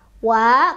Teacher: Tau, tau, tawwa, wa, ketemu lagi sama mam tobi'i, karena ada alif pasangannya sebelumnya fathah di atas huruf wawu. Jadi dipanjangkan dua ketukan.